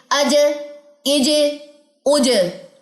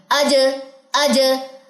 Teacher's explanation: اس میں شدت کی صفت موجود ہے تو یہاں پہ ذرا تھوڑی سی سختی آئے گی.